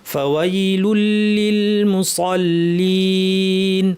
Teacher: জিহ্বার শীর্ষ নিচে পাটির দাঁতের গোড়ায় লাগিয়ে আওয়াজটা উপরে ঠেললে সাদ হবে